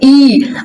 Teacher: कहां पे रहना चाहिए आपका फोकस, जीभ पे। जैसे ई ए आप सारा बोलेंगे ना तो जीभ आपकी कहां पे रहेगी, आगे वाले भाग में। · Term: अग्रभाग